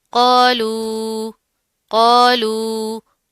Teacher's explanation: कौफ मोटा पड़ा जाएगा, इसके साथ का अलिफ भी मोटा पड़ा जाएगा, ठीक है। मद आ रही है, इसको खींच कर लंबा करके पढ़ेंगे।